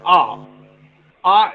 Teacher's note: the back of the tongue has been raised to the open position and the lips are unrounded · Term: back open unrounded vowel